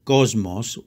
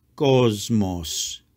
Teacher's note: the first s sounds like a zed because the letter after it is an m